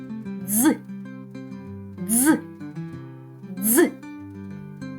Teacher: посмішка зубки наближені кінчик язика зімкнений із нижніми зубками горло працює носик набирає повітря і продувається скрізь зубки промовляючи перший звук д і швидко перестрибує на звук з наче з'єднується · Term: звук ДЗ